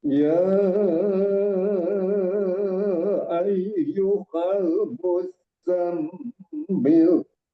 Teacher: di awal penekanan di zai-nya di pendengaran saya agak kurang karena tasdid ya. Di mimnya juga tadi terkesan agak kurang di awal. Kebetulan mim juga tasdid, mim tasdid itu hunnah musaddada.